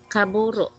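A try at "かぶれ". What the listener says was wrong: Yung ru, palitan mo nito.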